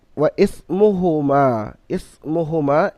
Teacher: হরফে মাদ্দার পরে হামজা অন্য কালিমা এসছে, অর্থাৎ মাদ্দে মুনফাসিল, 3 থেকে 4 আলিফ পরিমাণ টান দিয়ে পড়তে হবে। হরফে মাদ্দার পরে হামজা আলিফ রূপে এসছে, এখানে মিমকে 3 থেকে 4 আলিফ পরিমাণ টান দিয়ে পড়তে হবে।